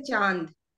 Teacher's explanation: यदि हम अनुनासिक करते हैं तो नाक और मुंह दोनों से वायु बाहर निकलती है